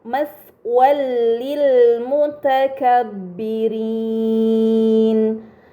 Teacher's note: fathah tain dibaca secara melebur tanpa gunnah yang dipanjangkan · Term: idgham bila gunnah